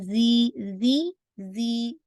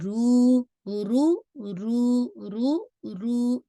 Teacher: रू को आपने 2 काउंट किया, ये वाव मदिया हो गया।